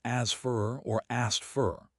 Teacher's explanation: We frequently drop the K sound entirely in this specific cluster because SKTF is just too much work.